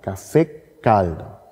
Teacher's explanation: So, Caffè caldo, der heiße Kaffee, Caffè caldo. Und das K ist länger gesprochen. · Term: Initialfortisierung